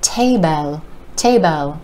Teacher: will be pronounced as table Tabo with that short e sound sneaking in there we want to pull that sound out and think of smashing